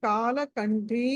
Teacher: క తర్వాత అనుస్వారం ఉంది తర్వాత ఠ ఠ మహా ప్రాణం ఠ ఉంది కాబట్టి ట వర్గంలోని పంచమాక్షరం పంచమాక్షరం ణ అనాలి